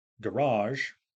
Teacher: the noun garage uh has stress on the second syllable